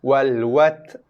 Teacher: Bunyi ta Ta ada sedikit hembusan nafas yang keluar. Wal wat. Habiskan ta, bunyi dia dengan sifat dia.